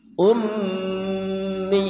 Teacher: mimnya gunnah, mim musyaddadah tajibul gunnah.